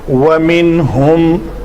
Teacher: نون کے بعد حروف حلقی میں سے ہا ہے, تو یہاں پہ نون کا اظہار ہوگا